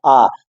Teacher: कहने का मतलब है अगर कोई स्वर हम उच्चारण करेंगे किसी स्वर का, तो यदि हमारा मुख द्वार पूरा खुल जाता है तो उसको विवृत स्वर कहेंगे। जैसे आ, जब मैंने बड़ा आ बोला आ, तो हमारा जो मुख द्वार है पूरा खुल रहा है